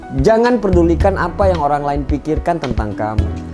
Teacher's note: Jelas terdapat penambahan fonem R pada video tersebut, sehingga pengucapannya menjadi perdulikan. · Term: penambahan fonem konsonan